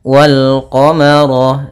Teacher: ada alif dan lam tertulis dan dibaca bertemu dengan huruf qamariyah, salah satunya ada huruf qaf, maka lamnya dibaca dengan jelas. Wal qamara, ro-nya tebal karena ro berharakat fathah. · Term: alif lam qamariyah